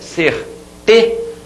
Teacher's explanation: você demora mais a voz aqui nessa sílaba que é a penúltima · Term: paroxítona